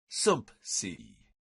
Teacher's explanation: it's hard to say some see without inserting a P